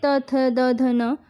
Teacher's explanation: दंत से त, थ, द, ध, न